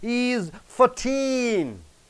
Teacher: Suppose if it ends with 14, you are stressing on teen.